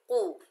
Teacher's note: कौफ के ऊपर पेश बगैर खींचे पढ़ेंगे कू। कौफ हरूफ इस्ताला में से है, हरूफ इस्ताला मोटे पढ़े जाते हैं, चाहे इनके ऊपर जबर जेर पेश कुछ हो या ना हो, लेकिन ये हर हालत में मोटे ही पढ़े जाते हैं।